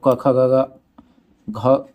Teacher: क ख ग का उच्चारण कंठ से होता है। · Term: कंठ ध्वनि